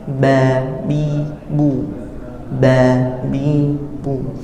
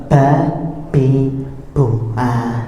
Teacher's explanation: Nah, konsekuensinya apabila kita menutup semuanya, kedua bibir ini akan terhembus nafas kita. Sedangkan ba itu tidak boleh ada hembusan